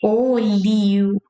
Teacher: It's a closed vowel sound. It's not open like a. It's closed.